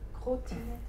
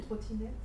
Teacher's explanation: Puisque le que est arrière, le te est avant, et donc on a une substitution qui est faite, on a une assimilation du lieu